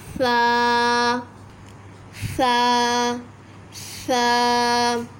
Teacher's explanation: दोनों दांतों के बीच में ज़बान को रखिए, मतलब जो ज़बान की नोक है वो ऊपर के दांतों की तरफ रखिए और बासानी इसको अदा कर लीजिए।